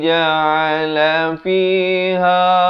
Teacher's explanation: Ja'a di pertengahan kerongkong.